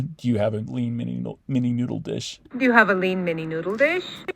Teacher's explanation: Do you have a lean mini noodle And dish? just going straight from the D to the yod at the beginning of you. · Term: zero boundary